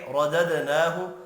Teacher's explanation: رددناہ، را کو زبر کی وجہ سے پر پڑھنا ہے، دال ساکن پر قلقلہ کریں گے۔ نون کے اوپر کھڑی زبر ہے، ایک الف کی مقدار میں کھینچ کر پڑھنا ہے۔